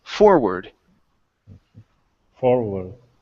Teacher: The stress is here at the very beginning.